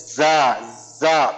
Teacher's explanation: যাটা হলো আমাদের এই 12 নম্বর মাখরাজ, জিহ্বার আগা, সামনে নিচের দুই দাঁতের আগা বা পেটের সঙ্গে লাগে আমাদের পড়তে হবে